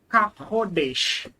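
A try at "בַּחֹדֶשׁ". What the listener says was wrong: That's a bet. Ba-chodesh.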